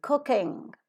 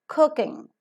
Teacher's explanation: The first K is aspirated, the second K is not aspirated.